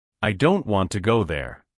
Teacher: The words that carry the most meaning are stressed, meaning they are said more strongly. Don't and go. The smaller words like I to and there are said more softly and quickly.